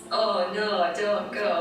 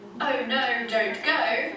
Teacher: it's almost like it becomes one sound in the north, whereas in standard English it's one vowel sound moving into the second vowel sound. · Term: O diphthong